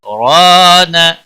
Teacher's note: ہے، اس کے بعد را نہ پڑھنا ہے، کلا بل ران، را الف مدہ ہے ایک الف کے برابر کھینچ کر پڑھیں گے ، نہ کو کھینچنا نہیں، علا لام کے اوپر کھڑی زبر